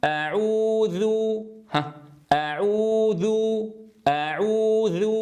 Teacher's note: لو بقيت ضاما شفتي هكذا، أعوذ، اسمعوا الصوت، ركزوا فيه جيدا، أعوذ، ذو، اسمعوا الذال، تجدونها تخرج بمشقة وفصاحتها ضعيفة.